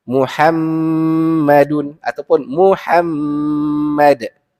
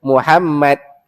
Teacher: Tapi kalau dalam Quran kalimah ataupun nama Nabi ni tak nak kita kena baca dengan dengung 2 harakat pada mim yang kedua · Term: wajibul gunnah